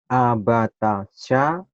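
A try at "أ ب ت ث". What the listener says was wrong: Bukan. Abatasa, sanya cedal.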